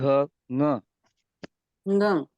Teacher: थोड़ा नाक से उच्चारण होता है इसका, नाजल कॉन्सोनेंट है इसीलिए